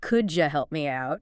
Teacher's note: Sometimes sounds blend together like the D and Y and could you making a J sound?